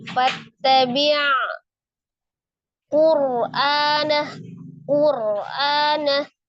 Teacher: Kemudian ainnya sukun, tawassut ya, fattabi' Qur'anah, Qur'anah. Roknya dibaca tebal, rok sukun sebelumnya dhamah. A-nya mad badal, hamzah yang dibaca 2 harakat.